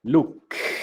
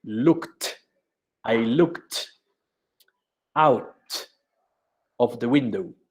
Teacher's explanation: No vibran las cuerdas vocales. Ed suena T.